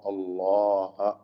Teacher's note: അള്ളാഹ് എന്ന ഇസ്മുൽ ജലാല ഇതിലെ ലാമിനെയും അതിന്റെ ദീർഘാക്ഷരമായ അലിഫിനെയും തഫ്ഖീം ചെയ്ത് തടിപ്പിക്കണം